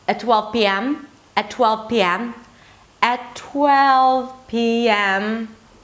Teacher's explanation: Notice that every syllable hits a different note. It's not all on the same note. 'At 12 pm' 'At 12 pm' 'At 12 pm' Right and even the 'm' is kind of like gliding down.